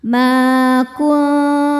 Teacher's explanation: Cara bacanya nun disamarkan ke ta disertai bunyi dengung tapi dengungnya sedikit. Ma kuntum. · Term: ikhfa hakiki aqrab